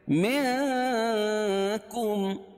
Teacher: نون ساکن کے بعد حروف اخفاء کے 15 حرفوں میں سے کاف ہے، تو اس کو ناک میں آواز کو چھپا کر پڑھیں گے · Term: اخفاء حقیقی